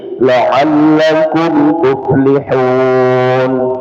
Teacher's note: mim sukun ketemu selain mim dan ba maka dia izhar ya izhar syafawi tidak berdengung ya jadi la'allakum tuflihun dirapatkan saja ya ee pada makhrajnya kemudian di pindahkan ke huruf berikutnya.